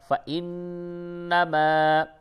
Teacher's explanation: اور یہ جو نون ہے، نون کے اوپر تشدید ہے، اس جگہ پہ غنہ ہوگا. فا زبر فا، حمزہ نون سے ان، نون زبر نا، میم الف زبر ما، فَإِنَّمَا.